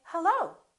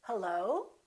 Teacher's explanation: Or I can make the rising intonation, and when I answer the phone, I can say hello. So the pitch goes up.